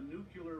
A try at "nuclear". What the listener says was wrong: You said the word wrong. It's nuclear. Nuclear. It's nuclear. You're adding a U in there.